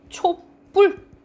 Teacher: 촛불 뭐 이렇게 발음난다 하면 뒤에 된 소리가 나죠. 된 소리가 나.